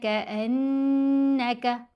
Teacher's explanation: غنہ مطلب آواز کو ناک میں پڑا جائے گا اور 2 حرکات کی مقدار آواز کو کھینچا جائے گا